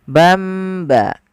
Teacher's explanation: diganti suara tanwin atau suara nunnya menjadi bamba. Ada tambahan mimnya. Bamba. Atau misalnya ban ba, sama, diganti nunnya menjadi suara mim. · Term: iklab